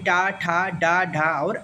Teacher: मुर्धा के अंतर्गत ट वर्ग है जिसमें ट ठ ड ढ और अण आते हैं दंत के